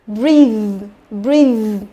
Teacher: Thế còn bên này nhớ là đọc là breathe, nhớ chưa, là y dài, nhớ chưa, là breathe. Và cái TH ở đây nó có là một âm rung, nhớ chưa, âm rung tức là âm hữu thanh